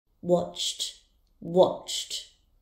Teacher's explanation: The verb watch has a sound ending in ch, so the ed ending will be pronounced as t.